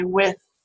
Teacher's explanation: So you can either produce it with that tongue making sort of light approximation with the teeth, or it could actually be what we call interdental, where the tongue sticks out a little bit between the teeth. So you can feel how you produce your TH sound when you say with. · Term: voiceless dental fricative